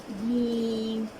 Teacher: جیم کی ادائیگی میں زبان پوری اوپر تالو پہ لگ جائے گی